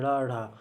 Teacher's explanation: ड़ा ढा उत्क्षिप्त ध्वनि होते हैं। जीभ ऊपर से नीचे जाती फिर ऊपर जाती है।